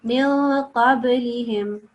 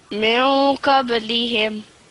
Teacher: So you have not done the full noon sound, which is completely right.